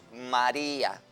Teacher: También tenemos María, que cuando la divido en sílabas es una palabra trisílaba y es una palabra llana porque la fuerza de pronunciación está en la penúltima sílaba